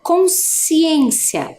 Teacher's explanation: o SC parece que faz só o som do S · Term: dígrafo